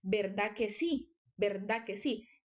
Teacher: Parece que no suena la D del final